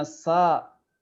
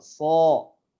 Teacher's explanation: nanti ada huruf sin, kalau dia dibaca tebal itu jadi huruf shad